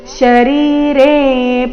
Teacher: ರಿ ಮತ್ತೆ ರೆ ಎರಡು ದೀರ್ಘ